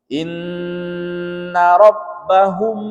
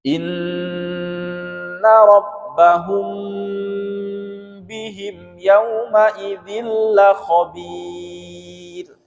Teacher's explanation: mulut kita ditutup rapat di huruf di ikhfa syafawi ini. Inna rabbahum, dan didengungkan selama 2 sampai 3 harokat.